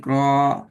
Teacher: ராங்கிறதுக்கு நாக்கு மேல போயிட்டு படணும். நான் சொன்னேன் படணும் சொல்லி படுற இடத்துல பட்டாதான் அந்த ராட உச்சரிப்புல சவுண்ட் வரும், அல்லது வராது.